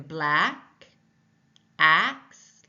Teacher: tongue is low in the front the mouth is opened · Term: short a sound